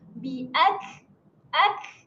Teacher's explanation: untuk sifat berangin huruf kaf, beranginnya seolah-olah berdesis. Maksudnya dia keluar angin yang sedikit sahaja.